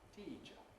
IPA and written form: ˈtiː ʧə (teacher)